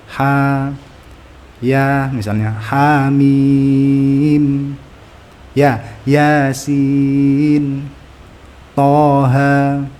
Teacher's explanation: Huruf ha, ya, to, ha, ra yang tergabung dalam kalimat hayyun tohar dihilangkan bunyi hamzahnya dan dibaca 2 harokat saja.